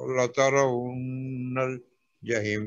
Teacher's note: اس میں را موٹی پڑھیں گے سر، اس لیے کہ را سے پہلے زبر آئی ہے